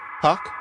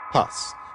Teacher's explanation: if you say pak, there's a tendency for that vowel to rise a bit in pitch, especially compared to if you go pas